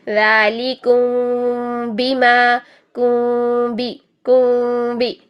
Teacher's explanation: उनमें हमने होंठों में पेपर गैप रखना होगा और फिर नरमी के साथ होंठों की ऊपर वाली स्किन को टच करते हुए बा को सख्ती से, यानी गुन्ना करने के बाद 2 हरकत जितना गुन्ना करें और फिर बा को सख्ती से अदा करें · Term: इख्फा शफ़वी